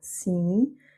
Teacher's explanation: le sim, donc le i nasal, sim, et pas sim, sim.